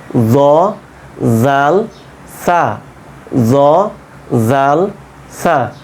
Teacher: জিহ্বার আগা ওপরের দাঁতের আগার সঙ্গে লাগিয়ে দিব, এই অংশে ওপরের দাঁতের আগা।